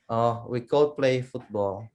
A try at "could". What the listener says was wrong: Remember, we don't say the L part, so it's not cold, but could. We could. Could. We could play football.